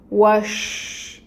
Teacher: شین پہ تشدید ہے تو واو کو ہم نے شین کے ساتھ ٹائٹلی جوائن کرنا ہے اور اس شین کی فتح کی حرکت کو 1 کاؤنٹ پڑھنا ہے، اور شین کی صفت جو ہے وہ بھی واضح کرنی ہے، وہ ہے تفشی، شاورنگ ساؤنڈ